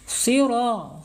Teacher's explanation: Siro, panjang 2 harokat, ya, menghadapi alif. Namanya mad tabi'i, ya, panjangnya 2 harokat, 2 ketukan atau 1 alif. · Shiro itu nggak boleh, ya, harus tebal. Siro, ro-nya panjang, ya, dan ro-nya dibaca tafhim nih, tebal, karena sini harokatnya fathah, ya. Siro, panjang 2 harokat, ya, menghadapi alif.